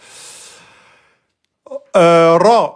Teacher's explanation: Le ra, quand il porte fatha, il est emphatique. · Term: ra, emphatique